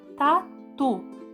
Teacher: como mais força é o tu então é uma sílaba oxítona é uma sílaba tônica oxítona porque é a última sílaba forte